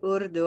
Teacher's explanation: I hear a touching sound with the r in Urdu